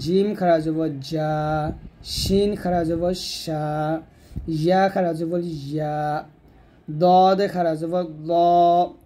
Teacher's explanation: জিহ্বার গোড়ার কিনারা উপরের মারি দাঁতের সঙ্গে লাগবে · জিম শিন ইয়া জিহ্বার মধ্যখান তার বরাবর উপর তলের সঙ্গে লাগাবেন